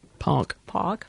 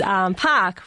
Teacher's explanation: Whereas for me, it's park, which is produced with the jaw a bit higher and the tongue a bit higher, and also more nasalisation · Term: Australian accent